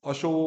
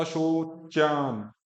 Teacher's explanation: ओ को बड़ा करो, अ छोटा है तो अशो। और फिर च और यह तो च, चय नहीं, अशोचयान नहीं, च के बाद में अ नहीं है, चा, अशोचान।